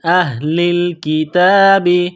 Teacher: کثیر من اہل الکتاب، حمزہ کو ہا کے ساتھ ملانا ہے، یہ گول ہا ہے چشمے والی، صرف منہ سے ہوا نکالنے کی طرح اس کو پڑھتے ہیں۔